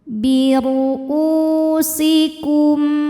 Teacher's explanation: Karena mim sukun nya tidak menghadapi mim, tidak menghadapi ba. Maka mim sukun ini kita bunyikan dengan em, jelas. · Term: izhar syafawi